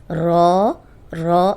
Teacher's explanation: رو، یہ موٹا پڑھیں گے، رو رو، اور اس میں بھی ہونٹ گول نہیں ہوں گے